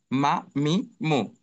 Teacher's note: ঠোট থেকে উচ্চারিত হবে। তবে একটু সামনে অর্থাৎ শুকনা অংশ থেকে উচ্চারিত হবে।